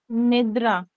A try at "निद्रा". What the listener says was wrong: निद्रा। निद्रा नहीं, र को एकदम से बोलो, र।